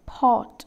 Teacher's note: fully open position the lips are in rounded position pot rounded the jaws are wide open